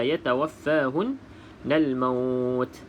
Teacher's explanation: Nun bersabdu wajibul gunah juga kita wajib dengung dua harakat